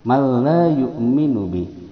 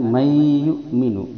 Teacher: idgham bila gunnah, dia dimasukkan tanpa disertai dengungan